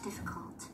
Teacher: Trọng âm sẽ rơi vào âm thứ nhất